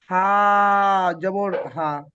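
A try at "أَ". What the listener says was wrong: হামজা আবার টানবে না হামজা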